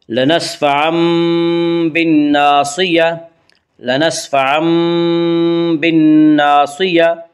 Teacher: یعنی نون ساکن اور تنوین کو میم سے بدل کر غنہ کے ساتھ پڑھیں گے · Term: قلب